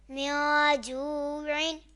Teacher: یہاں نون ساکن کے بعد حروف اخفا میں سے جیم آ رہا ہے تو اخفا ہوگا، یعنی ہم گنہ کریں گے